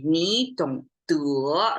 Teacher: when you say 你懂得 rising tone, that means there are things unsaid, but I'm not saying it here, but 你懂得 is like, we didn't say, but things are not stopped right there.